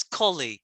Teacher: The second syllable should be really short. So it's colleague.